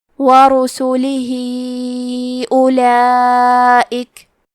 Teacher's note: کلمت اولئک میں واو ہے، لیکن ہمیں واو کو ظاہر نہیں کرنا ہے. الف کو پیش سے پڑھ کے حرف اللام کو پڑھیں گے.